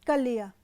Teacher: कर लिया को बहुत तीव्रता से बोलेंगे तो कलिया तो र ल में बदल जाता है